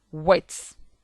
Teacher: W. Labiovelar semivowel. Wet.